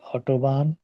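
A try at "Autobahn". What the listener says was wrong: আউটোবান, আউটোবান, অটো না,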